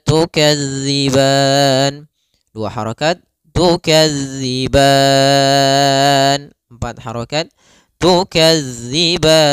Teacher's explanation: kita boleh memanjangkan sepanjang 2 harokat atau 4 harokat ataupun 6 harokat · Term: mad arid lisukun